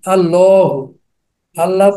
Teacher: আল্লাহ শব্দ প্রথমে থাকলে লাম মোটা হবে, এক আলিফ টান হবে।